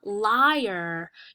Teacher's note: When you say liar, you can hear the I separate from the A in the word